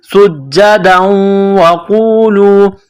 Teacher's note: سین میں سیٹی کی آواز پیدا کرنی ہے، سین کو باریک کرنا ہے ، سین کو جیم کے ساتھ ملانا ہے، جیم میں سختی